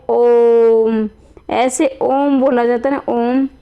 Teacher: और देखो मैंने उच्चारण किया ओम, ऐसे ओम बोला जाता है ना, ओम, तो ये 3 होता है, यानी ये संख्या का 3 है, यानी कि उनके उच्चारण में 3 गुना समय लगता है, इसलिए इसे ओम का यानी इसे प्लुत स्वर कहा गया है